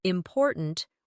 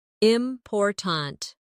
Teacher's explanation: in the word important, we stress the second syllable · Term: word stress